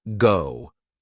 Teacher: a word like go, where your lips form a more rounded shape